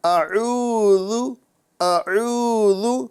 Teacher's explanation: ذال کی صحیح ادائیگی کرنا ہے، یعنی زا نہیں بلکہ ذا ادا کرنا ہے